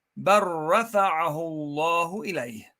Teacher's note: In this case, you see lam here, bel, but because ra is coming after it, you merge the lam into the ra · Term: idgham